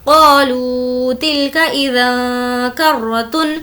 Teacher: تنوین کی آواز جو کہ نون ساکن کے مشابہ ہوتی ہے، ہمیں اس کو ناک میں چھپانا ہے. وہ اس لیے کہ تنوین کے بعد کاف ہے اور کاف حرف اخفا کے 15 لیٹرز میں سے ہے، اسی لیے ہم آواز کو ناک میں چھپائیں گے.